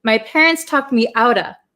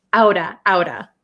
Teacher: The T becomes a flap T. It is between two vowels. So outa. You'll hear a lot of Americans saying outa.